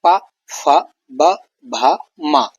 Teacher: ये ओष्ठ यानी ओठों के मिलने से ये वर्ण निकलते हैं बाहर, इनकी ध्वनि निकलती है। जैसे दोनों ओठों से उच्चारण होता है इन वर्णों का, इन्हें लिप ध्वनि भी कहते हैं। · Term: ओष्ठ वर्ण